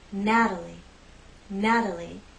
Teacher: In this name, we have three syllables, and it's the first syllable that's stressed, Natalie, Natalie. The T is part of an unstressed syllable, so we use the flap T.